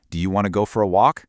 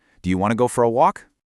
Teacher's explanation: The word you often gets shrunk down to a simple ya sound.